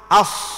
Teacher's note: Jadi huruf sad tu nampak sebutan dia tu penuh mulut. As. Penuh mulut panggil.